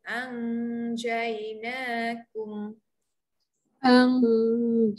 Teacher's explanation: huruf jim tengah-tengah lidah naik ketika dengung